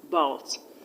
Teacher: a schwa sound can never be stressed. So the stress is on the second syllable